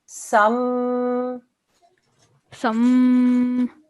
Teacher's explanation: Because it's a meme mushaddad, we're going to do 2-second nasal sound.